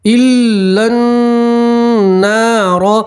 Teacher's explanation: لام کو سیدھا آپ نون سے ملائیں گے، نون کے اوپر تشدید نون میں گننا کریں گے اور یہاں جو الف ہے اس کو نہیں پڑھیں گے. · نون کے ساتھ الف مدہ اس لیے آپ ایک الف کے برابر کھینچیں گے